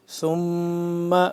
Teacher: ثم میم مشدد آ گیا ہے تو اس کو ہم غنہ کریں گے